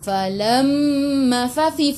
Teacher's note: fa fi fu gigi atas menyentuh perut bibir bawah.